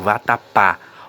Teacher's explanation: Observem que o pá é um som aberto. A sílaba fica com o som aberto, não fica com o som fechado.